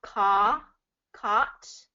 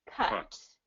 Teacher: you're dropping your jaw a little bit more on the caw, caught. This one you don't drop as much.